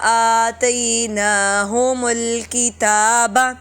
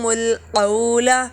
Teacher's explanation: یہ کاف جو ہے وہ باریک ہے، اوپر جو قولا میں کاف تھا وہ موٹا کاف تھا۔ آتَيْنَاهُمُ الْكِتَابَ، ہا اور میم بالکل لمبا نہیں ہوں گے۔